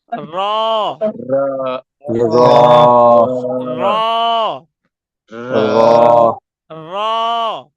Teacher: মুখ গোল হবে না, মুখ লম্বাই থাকবে, শুধু জিহ্বার আগাটা দাঁতের ভিতরে লাগবে, উপরে লাগবে।